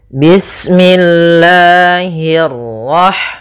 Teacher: pada lafal Allah, Allah itu ada mad thabi'i pada lafal lanya. Nah, di sini kita panjangkan dua harakat.